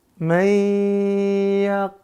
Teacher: jangan terlalu neken, setengah tekanannya tapi didengungkan.